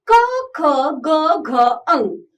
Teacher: बच्चों ये क वर्ग के व्यंजन कंठ से बोले जाते हैं।